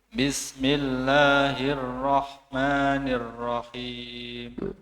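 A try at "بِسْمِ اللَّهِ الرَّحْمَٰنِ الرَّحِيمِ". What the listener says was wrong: Haknya, hak sama sin jangan terlupakan, diseret dulu. Bismillahirrahmanirrahim. Itu tadi huruf yang berharokat kasroh tidak lewat dari hidung.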